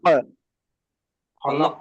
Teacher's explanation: কফ সাকিনকে কলকলা করে পড়তে হবে। খলাক, কলকলা করে পড়তে হবে।